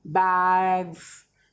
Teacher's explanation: यहां पे z की साउंड आती है दोनों जगह पे पीछे